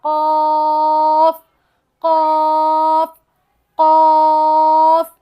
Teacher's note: अब अक़्सा लिसान को हमने, अक़्सा लिसान यानी ज़बान का वो हिस्सा जो हलक की जानिब है, उसे अक़्सा लिसान कहते हैं, और ये होंठों से दूर है। जब ये कव्वे की जड़ से मुत्तसिल हिस्सा यानी नरम तालु से लगे तो उससे क़ाफ़ अदा होगा